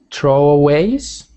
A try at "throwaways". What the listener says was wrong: Yep, so that, make sure you've got the TH sound. It is not throwaways, it's throwaways. Throwaways. You don't ever want it to sound like like tro. It must always be throwaways.